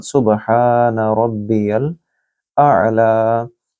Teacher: तस्बीह रुकू में भी सुब, इसको गूंजती आवाज़ कलकला के साथ अदा किया जाएगा, यहाँ भी कलकला के साथ सुबहान रब्बियल आला। हा को लंबा करेंगे क्योंकि आगे अलिफ मद है। रब्बियल आला, आइन को गले से बोलिए और लाम को लंबा करें क्योंकि यहाँ खड़ी ज़बर।